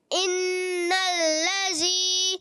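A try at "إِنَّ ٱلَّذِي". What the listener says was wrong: لذی زی نہیں آئے، ان الذی،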